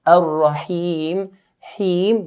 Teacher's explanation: when we stretch the kasra to Ar-Rahim, please make sure that the stretching of the kasra sounds like an E sound.